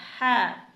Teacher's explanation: इस हा को हमें हलक से अदा करना है, यानी हलक के आखिरी हिस्से से ज़बान की जड़ जो ऊपर तालू से लगेगी तो हुर्फ हा अदा होगा